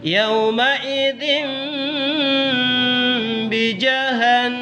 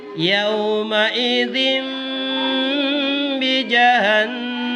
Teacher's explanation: Bunyi nun sukun dan tanwin dengan bunyi mim. Jadi itu yang nun sukun atau tanwin itu diganti dengan suara mim. Ya. Apabila bertemu huruf ba. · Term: iqlab